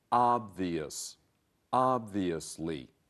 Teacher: A word here about this word, it is obvious that. Remember, it's 3 syllables. The first syllable, not the second, has the accent or stress.